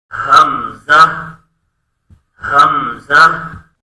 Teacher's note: اس کی ادائیگی حلق کے نیچے والے حصے سے کی جاتی ہے، جس طرح کے ہا کی ادائیگی کی جاتی تھی، بالکل اس کا مخرج حمزہ کا ہا کی طرح اقصی حلق ہے، یعنی حلق کے نیچے والا حصہ اس کا مخرج ہے